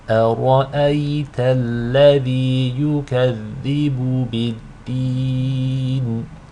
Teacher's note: Over here we have a special type of mud called mud al-'adi lis-sukun. It's a mud that results due to stopping at the end of the ayah. You can elongate it 2, 4, or 6 counts. For the purpose of this demonstration, we will elongate it with 4 counts.